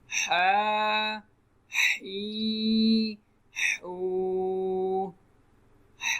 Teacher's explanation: ہا جو ہے یہ حلق کے درمیان والے حصے سے ادا ہوتا ہے، اس لیے ہا اور ہا میں واضح فرق کرنا ہے.